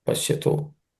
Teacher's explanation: There are no sandhi related changes except one, which is pashyato, is actually pashyataha, where visarga becomes u, and so tha plus u becomes to, pashyato. So pashyataha becomes pashyato because of sandhi.